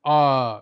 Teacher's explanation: उच्चारण में मुख पूरा खुलता है। आ, जब आ बोलते हैं तो आपका मुंह पूरा खुल जाता है। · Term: विवृत स्वर